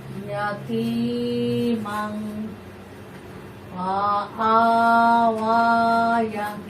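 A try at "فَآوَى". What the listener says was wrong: ইয়ার কেন বলতেছো? ইয়ার উপর কিছু আছে? ফা, ফা আ ওয়া। এই ইয়ার মধ্যে কোনো যে কিছু নেই, অতএব এখানে এই ওয়াটা লেখার মধ্যে আসবে, উচ্চারণে আসবে না। ইয়াতিমাং ফাআওয়া, ইয়াতিমাং ফাআওয়া।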